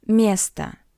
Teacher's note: е is stressed and o is unstressed